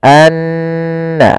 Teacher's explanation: Maka cara membacanya tahan dulu n-nya, anna, baru dilepas. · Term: gunnah